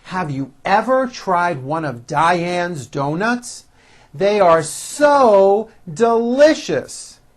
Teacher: listen to my intonation and notice how i slowly step up and then i work my way down again